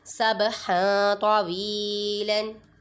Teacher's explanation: یہاں پر با پہ قلقلہ ہو رہا ہے، ادھر قلقلے کی آواز نکالیں گے